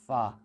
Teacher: فا عزیزان محترم یہ نیچے والے ہونٹوں کا جو خشک حصہ ہوتا ہے اس سے جب اوپر والے دانت کے جب سرے ٹکراتے ہیں تو وہاں سے فا ادا ہوتی ہے